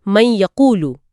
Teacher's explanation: ہم نے پہلے سیکھا ہے کہ جب نون ساکن کے بعد حروف یرملون میں سے یہ یا واو آئیں تو ہم ادغام کرتے ہیں۔ جی، یعنی نون کی آواز کو اگلے حرف میں ملا دیتے ہیں